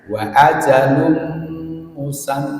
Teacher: Ini tanwin ketemu dengan mim. Bacaan idgham bi gunnah.